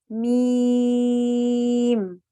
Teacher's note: تو یہ آواز صرف منہ سے باہر نکالنی ہے، ناک میں لے کے اسے نہیں جانا ہے